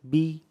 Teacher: زیر جو ادا ہوتا ہے یہ منہ اور آواز گرا کر